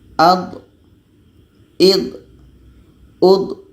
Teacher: Jadi tidak ada anginnya pada huruf dha. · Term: jahar